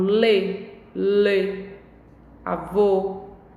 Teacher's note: a abertura da boca fica mais fechada quando a palavra tem acento circunflexo